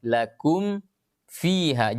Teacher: ke dalam Va atau mim sukun ke dalam wow kenapa karena huruf mim sukun dengan Va atau mim sukun dengan Wow ini adalah dua huruf yang sama tempat keluarnya sama-sama keluar di bibir